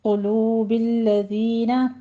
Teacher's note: قوف کو پر پڑھتے ہوئے ضمہ ہے ہونڈ گول کر لینا ہے ، قلوبی نہیں پڑھنا اس کو، قلوب الذین کفروا الرعب، دونوں